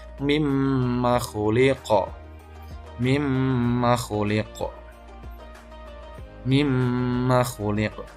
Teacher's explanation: Jadi huruf qalqalah kemudian dia terletak di akhir kalimat dan dibaca waqaf, maka dinamakan qalqalah kubra, artinya dia dipantulkan dengan pantulan yang tebal.